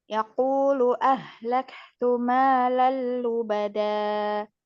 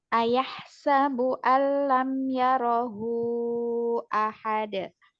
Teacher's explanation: Itu pada kata idgham bila gunanya terdapat pada kata malal lubada. Karena ada tanwin bertemu dengan huruf lam, maka dibaca dileburkan tanpa dengung. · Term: idgham bila gunnah